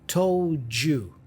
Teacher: The D for told joins with the Y for you with that J sound